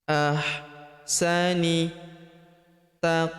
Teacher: Huruf qaf berharakat sukun. Kita pantulkan atau kita qalqalahkan.